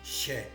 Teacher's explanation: S se palataliza en she. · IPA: /ʃ/